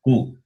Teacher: ku is the combination of the sound that is guttural and labial. The sound comes from the throat and also from the lips.